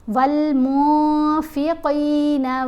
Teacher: نون ساکنین یا نون تنوین کے بعد حروف اخفا میں سے کوئی حرف آئے تو ہم نے نون کی آواز کو واضح نہیں پڑھنا، یہ اخفا کرنا کہلاتا ہے